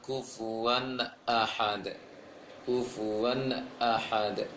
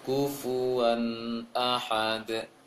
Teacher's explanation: Seharusnya dijelaskan bunyi nun pada tanwin itu tanpa dengung. Dijelaskan tanpa dengung.